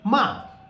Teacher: I'm sure you must have felt that my voice is falling sharply, ma, okay. So these were the rules of the 4 tones, how to speak them in the first tone, how to speak your voice should, you will have to drag a while. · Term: fourth tone